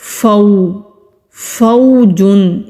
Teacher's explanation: वाव लीन है नरमी से अदा करना है खींचना नहीं है वाव जब अदा करेंगे तो होठ गोल होंगे